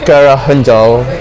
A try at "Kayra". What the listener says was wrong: In Turkish, you would say my name more with like a rolled R. So it would be like Kayra. Kayra. Kayra, yeah. Kayra. Kayra. Kayra.